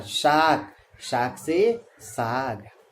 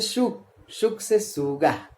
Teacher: यदि पहली ध्वनि तीसरी में बदल जाए जैसे क से ग, तो इसे कहेंगे अघोष का घोषीकरण